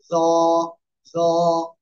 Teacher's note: জিহ্বার আগা উপরের দুই দাঁতের আগার সাথে লাগিয়ে মোট আওয়াজে উচ্চারণ করতে হবে। জ, জ, এক লিপ টান হবে।